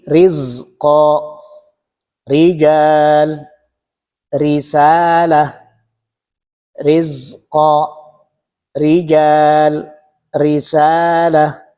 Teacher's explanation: Artinya dalam pengucapannya ringan. Ro yang berbaris kasrah inilah yang dibaca tiis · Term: tarqik, tarqiq